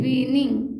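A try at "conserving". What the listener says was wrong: वीनिंग क्यों वीनिंग है double N है क्या उसमें विंग विंग कंजर्विंग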